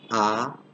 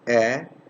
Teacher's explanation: when i'm saying ah you can see notice that it's fully open when i'm saying air it's not fully open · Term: half open